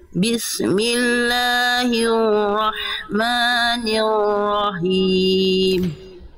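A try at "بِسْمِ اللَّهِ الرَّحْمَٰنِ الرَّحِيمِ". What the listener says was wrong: Oke, huruf ro-nya lebih digetarkan lagi Bunda. Jangan niwo. Huruf ro punya sifat namanya adalah takrir. Takrir itu dia bergetar tapi tidak berlebihan. Bismillahirrahmanirrahim.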